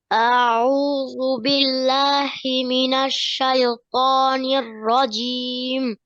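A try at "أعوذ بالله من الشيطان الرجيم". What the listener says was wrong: একটু খেয়াল করেন যেন শায় শায় না হয়।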